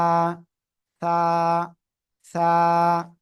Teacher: জিহ্বার আগা উপরে দুই দাঁতের আগায় লাগাবেন লাগিয়ে নরম করে এক আলিফটা নিয়ে উচ্চারণ করতে হবে